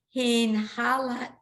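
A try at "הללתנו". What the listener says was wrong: And in this case, the lamed is going to be silent because it's the end of the syllable. I mean, the shva is going to be silent under the lamed.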